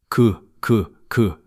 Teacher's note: 기억 소리를 내 보세요. 그 그 혀뿌리가 목구멍 쪽을 막는게 느껴지시죠